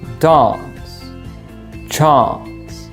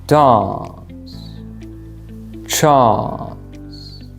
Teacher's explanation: Another characteristic feature of the British accent is that the British usually use the long a sound